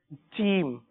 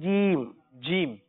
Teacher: یہ حرف جو ہے زبان کے درمیان سے اور تالو کے درمیان سے ادا ہوتا ہے. عموماً جب یہ حرف ادا کرتے ہیں تو اس کو چے کی طرح ادا کرتے ہیں, جیسے چیم.